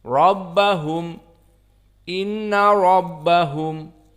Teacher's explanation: Inna rabbahum, maka ra di sini jelas mufakhamah, li'anna huwa fathah.